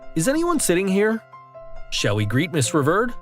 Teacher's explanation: for the following questions a rising intonation is observed